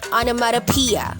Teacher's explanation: ang stress ay nasa 5th syllable na P, onomatopoeia.